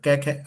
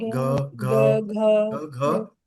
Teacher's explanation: सघोष जिनमें कंपन होगा। तो क बोलोगे आप कंपन नहीं लगेगा। ख बोलोगे कंपन नहीं लगेगा। क ख अब ग बोलो ग घ इनमें कंपन है